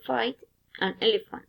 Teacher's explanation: The articulators involved, the lower lip touch the upper teeth.